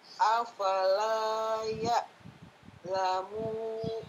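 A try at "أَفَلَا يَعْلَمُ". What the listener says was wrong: Ya lamunya pendek. Ya lamu idza, langsung. Ya lamu idza, langsung begitu.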